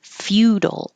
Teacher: you're starting with your tongue in a high Y position as you make the F.